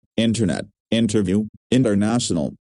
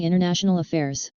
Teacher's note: dropping the t is also common with the prefix inter